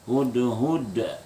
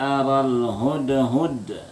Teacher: Kita kancang sedikit pada dal yang penting pertamanya tuh dal itu ada pantulan qalqalah, yang kedua pantulannya sedikit lebih keras karena disebut kubra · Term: qalqalah kubra